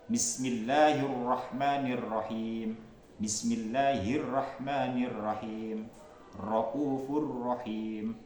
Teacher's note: sifat takrir, bergetarnya ujung lidah